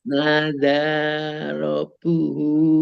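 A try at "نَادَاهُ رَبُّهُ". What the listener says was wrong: Bu-nya belum dibaca, Bu. Nadahu rabbuhu.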